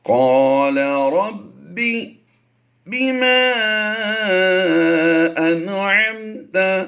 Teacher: یہاں پر یاد رکھیے نون ساکن کے بعد حروف حلقی میں سے عین آ گیا تو یہاں پر غنہ نہیں کریں گے، اظہار کریں گے.